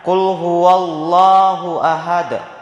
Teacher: dibaca tebal sehingga kedengaran bunyi loh · Ahad, cara membacanya dibaca pantul dengan berat, dikarenakan adanya qalqalah. Huruf qalqalah salah satunya yaitu huruf dal yang berada di akhir waqaf, maka cara membacanya dibaca pantul dengan berat. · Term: lafaz Allah yang dibaca tebal